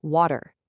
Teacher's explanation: Notice how your tongue physically bounces off the ridge behind your teeth? You don't stop the airflow for a hard T. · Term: flapping